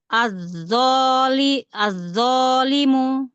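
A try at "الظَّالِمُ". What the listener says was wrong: Bagus. Angkat lagi dho pangkal lidahnya. Az-zolimu. Limu. Mu-nya jelasin.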